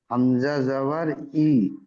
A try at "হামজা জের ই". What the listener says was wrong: জাবার না ভাই। পড়েন তো ভাই জের দিয়ে।